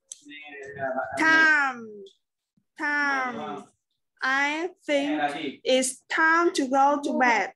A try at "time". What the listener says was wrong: Đó, nguồn lỗi đó luôn. Time. Không cong lưỡi. Cái số time ở dưới là chưa được đâu nha, không phải là time, là time.